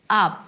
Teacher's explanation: we start with a and father and then it's a B sound, but a very small one